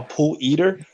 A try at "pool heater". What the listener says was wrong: No, you said eater.